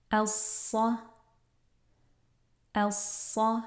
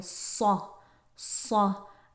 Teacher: I'm not rounding my lips a lot to get that heaviness. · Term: Saad